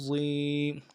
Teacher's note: عین زبر ع، ضا یا زیر ضی، ضا موٹے حروف میں سے موٹا کرنا ہے ضا کو، اور یا مدہ کھینچنا ہے